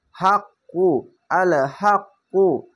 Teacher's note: আল হাক্কু, হামজা লাম জবর আল, এই তাসদিদ নয়, এই সাকিন বা জজম যেটাই বলেন, এই শব্দটিকে এই ডান পাশের অক্ষরের সঙ্গে এই বাম পাশের অক্ষরটিকে একবার ধরবে, হামজা লাম জবর আল যুক্ত হবে। আর এই তাসদিদওয়ালা অক্ষরটিকে দুইবার উচ্চারণ হবে। হা কফ জবর হাক, কফ পেশ কু, হাক কু, আল হাক কু।